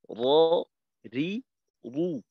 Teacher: মাখরাজটা হইলো জিহ্বার আগার পিঠ তার বরাবর উপরে তালুর সঙ্গে লাগাইয়া উচ্চারিত হয় র